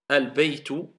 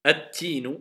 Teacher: Si la première lettre est shamsiya, on n'entend plus le L, car le L s'est transformé en prononciation en la lettre qui suit. C'est pour cela qu'elle est doublée shedda.